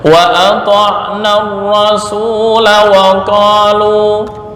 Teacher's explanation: menjadi pendek ketika diwasolkan. Nah, karena di sini kaidah mengatakan yang sebelumnya alif tetap dalam penulisan dan wakaf, tetapi dihilangkan ketika wasol.